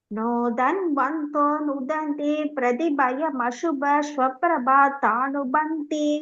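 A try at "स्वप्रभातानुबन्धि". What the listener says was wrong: பாத்தா இல்ல பாதானுபந்தி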